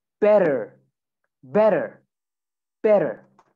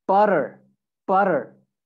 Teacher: when we have two t's two t's okay together like here two t's so you would replace that with a sound that it's almost like a d sound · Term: american accent